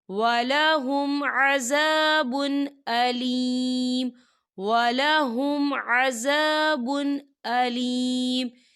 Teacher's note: دیکھیے با کے اوپر تنوین ہے اور تنوین کے بعد حمزہ آ رہا ہے، اور حمزہ جو ہے حروف ہلکی کا ورڈ ہے، تو یہاں پر اظہار ہوگا اور ہم اسے بنا غننے کے پڑھیں گے